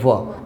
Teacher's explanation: તો વ. આપણે જે ઉપરના જે દાંત છે એ નીચેના હોઠને સ્પર્શે એનો ઉચ્ચારણ વખતે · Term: દંતોષ્ઠ્ય